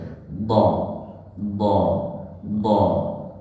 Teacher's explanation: Nah huruf d ini yang dipanjangkan adalah lidah bukan suara namun ketika membaca hurf D itu beriringan dengan sifatnya yang rakhawah